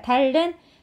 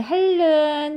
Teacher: 비음이 유음을 만나서 유음으로 변했으니까 유음화 된 거잖아요. 그래서 유음화 현상이라고 합니다.